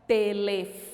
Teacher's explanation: O fó, que é a penúltima sílaba, então ela é uma palavra paroxítona